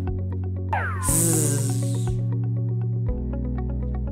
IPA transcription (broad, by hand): z